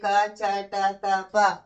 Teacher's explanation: క చ ట త ప అని పరుషములు వస్తున్నాయి అన్ని అల్ప ప్రాణాలు